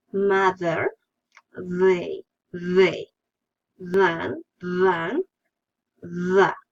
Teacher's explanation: The sound is a dental, fricative, and voiced.